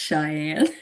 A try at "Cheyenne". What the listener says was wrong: Be careful how you say her name. You'll get a comment. It's not Shy, it's Cheyenne.